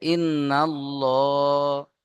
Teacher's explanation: আল্লাহ শব্দের লামকে পুর করে মুখটা গোল করে পড়তে হবে। তাহলে ইন্নাল্লাহ, হা খাড়া জবর হা, সরি হা জবর হা।